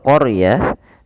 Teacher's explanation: huruf r-nya ditebalkan karena huruf ro yang didahului dengan huruf fathah maka dia kita namakan dengan ro tafkhim harus tebal.